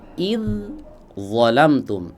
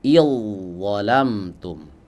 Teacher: Tapi huruf dalnya melebur masuk ke huruf d. Idolamtum. Ini yang disebut dengan idgham mutajanisain.